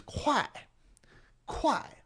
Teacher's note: K is extra aspirated.